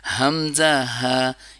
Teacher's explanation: حمزہ ہا یہ گلے کے نچلے حصے سے ادا ہوتے ہیں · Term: حروف حلقی